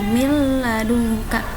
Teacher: Kalau ini min ladungka samar-samar atau tanpa mendengung, min ladungka, nunnya masih dibaca tapi disambungkan sedikit ke lam, min ladungka.